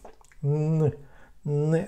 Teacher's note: In fact, the air will go into the nasal cavity.